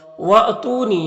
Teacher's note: حمزہ ساکنہ ہے، جھٹکا لگے گا